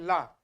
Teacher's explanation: हमारे जो जीभ के बगल से है दोनों तरफ से जो पार्श्व में है उससे हवा निकल रही है